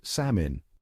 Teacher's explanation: the problem with salmon is that it's got a silent L hanging out in there, just trying to blend in.